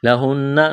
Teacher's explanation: نون مشدد ہے آواز ناک میں چھپائیں گے